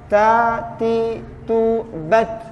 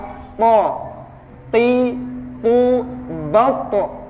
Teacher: Ta itu huruf hamas sehingga ada desisannya.